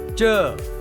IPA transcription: t͡ɕ˭